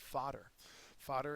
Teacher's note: the first syllable is accented